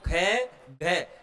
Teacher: महाप्राण होते हैं, जिनमें श्वास वायु की मात्रा क्या लगती है? अधिक लगती है।